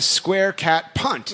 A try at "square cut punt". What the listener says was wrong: Not cat. It said you said cat. cut.